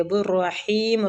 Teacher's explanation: را زبر کی وجہ سے پور پڑا جائے گا